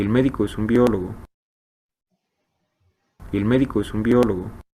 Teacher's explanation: aquí está subiendo un semitono entonces bueno no llega a un umbral de percepción donde ya · en la última sílaba tónica del enunciado, vemos un ascenso, pero si lo comparamos con los que vimos anteriormente, bueno, sobre todo el de la mujer que tenía un ascenso de 4 semitonos, aquí está subiendo un semitono. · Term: un pequeño ascenso, ascenso moderado